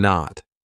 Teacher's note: My tongue is still up there, but I just didn't release it. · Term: held T